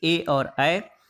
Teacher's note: कंठ और तालु में जीभ के स्पर्श से जो बोले जाने वाले जो वर्ण हैं उनको कंठ तालव्य कहा जाता है